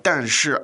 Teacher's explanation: and both fourth tones, isn't that correct?